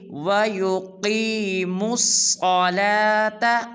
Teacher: اس میں 2 حرفوں کو پر ادا کریں گے، ایک وَيُقِي کی قاف کو اور مُصَّلَا کی صاد کو پر ادا کریں گے